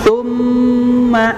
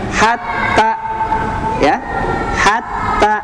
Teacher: karena dia huruf mim yang mengandung gunah maka ditahan dua kali lebih lama daripada tasdid biasa. Misalnya hatta ya, hatta kalau yang tsumma tambah satu kali tambah lebih lama.